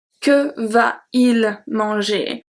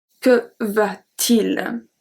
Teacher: If we don't have the T, it will be que va-il manger? And since we link a lot of words in French, we have to put a T in the middle to have a better pronunciation